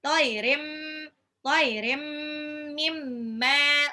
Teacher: tanwin ketemu mim, idgham bil gunnah, tahan